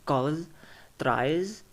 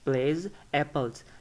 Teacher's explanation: s, es, and apostrophe s will be pronounced as z